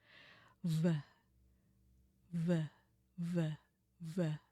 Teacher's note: Nah, jadi ee berasa tuh ee di leher kita ada getarannya. Bedanya di situ ee lehernya harus ada getaran v ve v ya bunyinya dia juga lebih kedengaran tebal ketimbang kalau kita hanya ngebunyiin anginnya aja. · Tapi kalau untuk bunyi V di bahasa Inggris itu dia posisi awalnya sama dengan F ya, gigi yang atas itu menyentuh bibir bawah, tetapi anginnya harus melewati tenggorokan lah gitu ya. Nah jadi berasa tuh di leher kita ada getarannya.